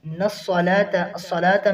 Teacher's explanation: الصَّلَاةَ میں جو لام کے بعد کھڑی زبر ہے اس کی ادائیگی 1 الف کرنی ہے۔ الصَّلَاةَ، صاد کو موٹا کرنا ہے۔